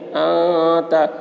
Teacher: نون ساکن کے بعد حروف اخفا میں سے تا آ رہا ہے، اس لیے نون کی آواز کو ناک میں چھپا کر پڑھیں گے، اس کو اخفا کہتے ہیں.